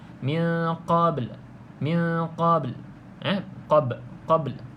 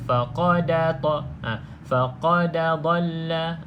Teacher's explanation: lantunan pada qalqalah tu hanya separuh